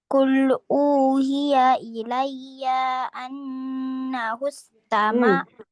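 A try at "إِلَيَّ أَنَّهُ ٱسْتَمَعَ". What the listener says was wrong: Iyanya tidak panjang. Ilayyaan langsung.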